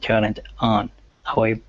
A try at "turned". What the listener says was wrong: instead of turn ed this is turned